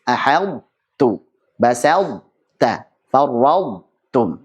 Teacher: Jadi ucapkan ta-nya dengan tebal, ada sifat idbaqnya. Baik, tanpa qalqalah tentunya karena sudah diidghamkan, baru kemudian ucapkan ta yang tipis.